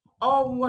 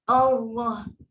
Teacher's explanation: Dan kita kena tahu kenapa salah, sebab hamzah bukan huruf bibir. Kan dah belajar makhraj. Hamzah adalah huruf daripada halkum.